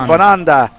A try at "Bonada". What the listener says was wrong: Bonada. There's no N after A.